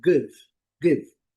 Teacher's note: Poderemos considerar uma mistura de e com i. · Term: I curto